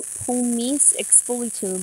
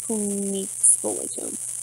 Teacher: you don't pronounce the last syllable of the first word, but instead elide it with the first syllable of the second word. So pomis expulitum becomes pomixpulitum. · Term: elision